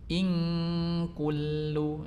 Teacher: membaca huruf in ini jangan sampai hurufnya itu i-nya itu jangan sampai ditarik mulur ya. Sehingga ing ini kan mulur hurufnya, tapi baca ing kullu.